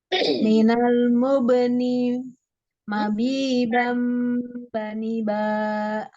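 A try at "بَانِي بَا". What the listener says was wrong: Ini jangan dipanjangkan. Bani ba. Nabi bam bani ba.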